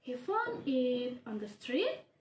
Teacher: the intonations or the voice is rising to higher pitch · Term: declarative questions